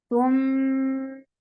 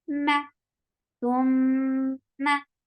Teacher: For fatha, open your jaws, and it will get gunna too. So gunna will be long, but the fatha is very short.